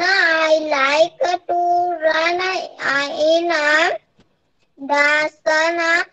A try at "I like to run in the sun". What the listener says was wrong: सामा नहीं है, सन है, रना नहीं है.